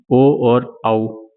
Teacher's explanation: कंठ और ओष्ठ से बोले जाने वाले दो वर्ण हैं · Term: कंठ ओष्ठ